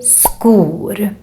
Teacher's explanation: shoes remember here the pronunciation is quite different from english because in swedish when we have s k together with a back vowel like we have here the o is the back vowel then it becomes a k sound